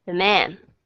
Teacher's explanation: cái chữ giờ nó đã trở thành ra là âm schwa sound rồi, không có nhấn cái chữ đó, the man. Các bạn thấy nó nhẹ nhàng hơn không?